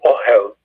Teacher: it is again accented in the first syllable, on the first syllable.